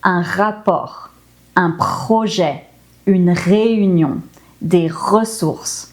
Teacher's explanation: it's from the throat, and it's kind of like if you think of a gargling sound, or like if you're gonna spit or something. · the French R is pronounced at the back of the throat, never with the tongue like in other languages such as the Spanish R that we roll.